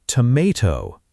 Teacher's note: Americans say tomato with that long A sound in the middle.